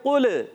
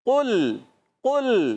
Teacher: قاف کو لام سے ملانا ہے لام کو ہلانا نہیں.